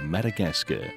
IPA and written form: ˌmædəˈɡæskər (Madagascar)